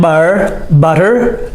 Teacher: it has the D sound even though it's the T but we say it with the D sound